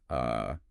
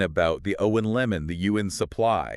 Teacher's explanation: It's represented by an upside-down e in the phonetic alphabet, and it is the single most common sound in the English language. It's just a completely relaxed, neutral, unstressed uh sound. >> The jaw is barely open, the tongue is dead center doing absolutely no work. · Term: schwa